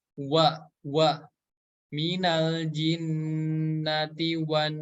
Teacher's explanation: Kita bertemu lagi dengan huruf nun yang bertasydid, maka sama didengungkan dua harokat